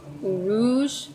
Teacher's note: that Z is kind of like a J and a Z sound together